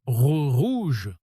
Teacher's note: Si vous prononcez rouge comme un espagnol, en mode rouge, en roulant le R comme en espagnol, ça sonne faux tout de suite